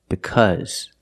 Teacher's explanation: The AU is pronounced with a short sound, like cup, cut, and up.